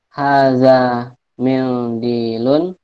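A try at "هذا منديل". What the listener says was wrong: nggak pakai dengung ya. Nggak usah pakai dengung. Kita bahasa Arab, bukan baca Al-Quran.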